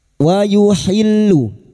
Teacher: wauhillu masuk pada huruf lam yang bertasdid